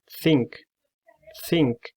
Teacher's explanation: The first consonant will be the sound. You have to use your tongue tip and the upper teeth, and it's voiceless. As the word think, think.